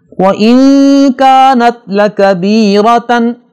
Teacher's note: نون کے بعد کاف آ رہا ہے، لہٰذا یہاں نون پہ غنہ کریں گے